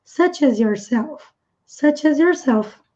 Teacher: Tudo emenda porque termina com som de consoante e começa por som de vogal.